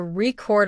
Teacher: He accidentally put the stress on the second syllable which turned the word into the verb record.